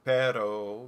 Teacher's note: this r that i'm talking about is the one that is commonly thought of as the tap or flap r